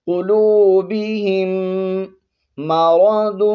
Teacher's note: را کو بھی موٹا پڑھیں گے اور ضاد بھی حروف مستعلیہ میں سے ہے، اس کو بھی ہم نے موٹا پڑھنا ہے